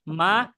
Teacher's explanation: মা এক আলিফ দিতে হচ্ছে আমার কারণ এটা এক আলিফ টান